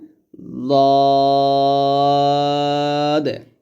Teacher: দাল হচ্ছে তা এবং তয়ের মতো, অর্থাৎ জিহ্বার আগায় সামনের উপরের দুই দাঁতের গোড়ার সঙ্গে লাগবে দাল। আর দদটা মোটা করতে হবে, জিহ্বার গোড়ার কিনারা উপরের মারি দাঁতে গোড়ার সঙ্গে লাগবে, যেমন এরকম দে।